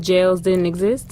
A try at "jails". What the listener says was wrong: It sounded like you said gels. Like hair gels. Jail. Not gel. Jail.